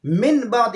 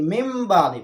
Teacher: جیسے مم بعد، اب یہاں پہ نون ساکن ہے اور اس کے بعد با آیا ہے، لہٰذا ہم یہاں پہ اقلاب کریں گے، یعنی جو نون ساکن ہے اس کو ہم میم کے ساتھ بدل دیں گے، من بعد نہیں پڑھیں گے بلکہ مم بعد پڑھیں گے، اس نون کو میم کے ساتھ ملائیں گے، مم بعد۔